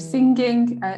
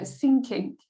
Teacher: for North Indian speakers pronounce ing sound as ink